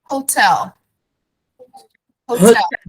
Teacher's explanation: E a sílaba tônica é na segunda sílaba, na última, não na primeira. Que nem a gente fala em português.